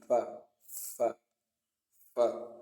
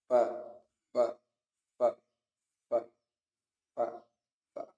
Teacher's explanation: And now let's move to the next one, which is fa. Fa is pronounced by combining the edge of the upper incisors when they hit down on the part of the lower lip.